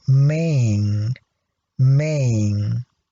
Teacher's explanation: we need to apply the vowel length rule in this case why because you can see that after the vowel we have a voiced sound